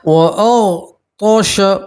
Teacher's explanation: غین کو ہی موٹا پڑھیں گے اور تو کو ہی موٹا پڑھتے ہیں، منہ بھر کے پڑھیں گے